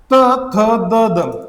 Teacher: तुम्ही जर यांचा उच्चार केला तर आपली जीभ कुठेतरी दाताला लागते म्हणून या वर्णाला म्हणतात दंत वर्ण